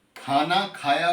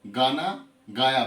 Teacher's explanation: खाना खाया को वो गाना गाया बोल जाएंगे, क्योंकि ख की जगह ग बोलेंगे, एस्पिरेट्स नहीं है।